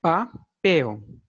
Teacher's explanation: Pel é a sílaba tônica. É a última sílaba, portanto, é oxítona.